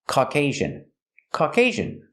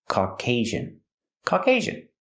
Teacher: put the stress on the second syllable and the second syllable has a long a sound